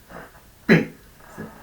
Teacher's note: P es bilabial, P, se juntan los labios, es bilabial. Es oral, porque el aire sale por la boca, P no sale por la nariz.